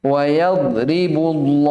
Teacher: Dibaca tebal karena sebelumnya dhamma yaitu huruf bu, ba.